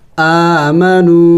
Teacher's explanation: واو سے پہلے اگر پیش ہو تو اسے واو مدہ کہتے ہیں، اور واو مدہ کو بھی ایک الف کے مقدار کھینچنا ہوتا ہے